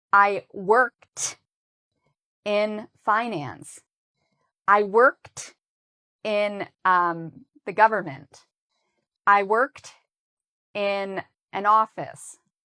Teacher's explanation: when you use ed with work, it sounds like a t sound